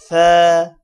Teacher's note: زبان کو اوپر والے دانتوں اور نیچے والے دانتوں کے درمیان میں رکھیں گے، تب سا ادا ہوگا۔ مطلب کہ اوپر والے دانت اور نیچے والے دانت ان کے درمیان میں زبان لے کر آئیں گے، سا ادا ہوگا۔